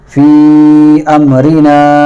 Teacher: اور فی امرنا اس میں جو مد ہے یہ مد منفصل کہلاتا ہے، اور اس کو ہم مد متصل سے تھوڑا سا کم کھینچ کر پڑھتے ہیں